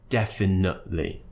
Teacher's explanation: I'm not producing the T after the schwa sound